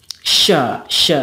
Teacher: syin juga ada tambahannya yaitu tafasyi atau menyembur